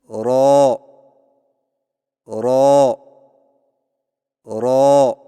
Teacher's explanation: जुबान की नोक की पुष्ट को ऊपर वाले दांतों के मसूड़ों से लगाकर मोटी आवाज में पढ़े